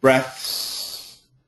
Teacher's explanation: it's an aspirated th and an S